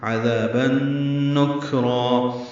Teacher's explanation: تنوین کے بعد نون آنے کی وجہ سے ادغام ہے، مع الغنہ